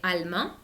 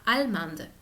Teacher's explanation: agregar la E hace pronunciar la D. Entonces pasamos de allemand a allemande.